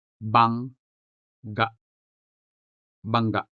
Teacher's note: The first G is attached to the letter N because they both comprise the consonant nga, whereas the second G belongs to a different sound system, ga in this case. Also, the word bangga has two syllables, bang and ga.